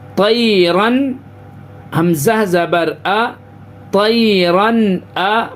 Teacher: تنوین کے بعد حروف حلقی یعنی حروف اظہار، حروف حلقی کے 6 حرفوں میں سے حمزہ ہا، عین ہا، غین خا جو حروف حلقی کے 6 حروف ہیں، تو تنوین کے بعد حروف حلقی کے 6 حرفوں میں سے حمزہ آ رہا ہے. اس کی وجہ سے ناک میں آواز کو روکیں گے نہیں، بغیر غنہ کے جلدی پڑھیں گے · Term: اظہار حلقی